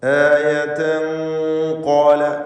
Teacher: ഇഖ്ഫാ ഹഖീഖി എന്ന ഹുക്മ് അവിടെ വരുന്നതാണ്. തൻവീനിനെ ഖാഫിന് മുമ്പിൽ അവ്യക്തമാക്കി മണിക്കണം. മണിക്കലിൽ തഫ്ഖീം വേണം. ആയതൻ ഖാല എന്ന് മണിച്ചുകൊണ്ട് ഉച്ചരിക്കുക.